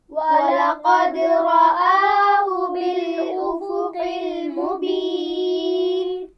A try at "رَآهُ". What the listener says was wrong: رَآهُ ہا کو واضح کیجئے.